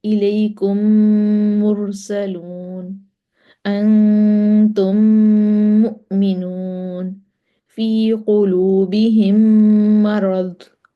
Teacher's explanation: پہلی میم کو دوسری میم کے ساتھ ملا کر ایک الف کے برابر غنہ کریں گے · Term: میم کا میم میں ادغام